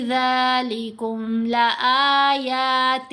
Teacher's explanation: تو یہاں ذال کو لمبا کریں گے 3 سے 4 حرکات کی مقدار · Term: مد منفصل